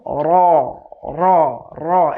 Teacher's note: 10 নম্বর মাখরাজ 10 নম্বর মাখরাজের মধ্যে জিহবার আগার পিঠ অর্থাৎ জিহবার আগার যে উল্টো সাইডটা আছে এই উল্টো সাইডটা বরাবর উপরে তালুর সঙ্গে লাগাতে হবে।